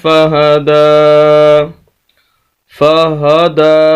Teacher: آخر میں کھڑی زبر ہے، دال کو لمبا کریں گے، یا ہے وقف اور بنا وقف کے ایک طرح ہی پڑھا جائے گا۔